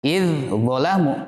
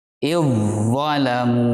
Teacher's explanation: Tidak boleh kita membaca idzalamu, tapi huruf zal dilebur dengan huruf zo.